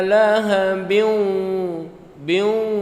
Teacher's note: ada ke hidung suaranya, dengung gunnah